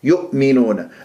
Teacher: ركز عليها حتى نقفل الاوتار الصوتيه جيدا بالهمزه الساكنه